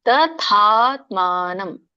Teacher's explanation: ತ ಸಣ್ಣದಿದೆ, ಆಮೇಲೆ ದೊಡ್ಡ ಥ ಬರೋದು.